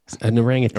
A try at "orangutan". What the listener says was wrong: Orangutan. You say it wrong. There's no G. You're thinking of the orange juice.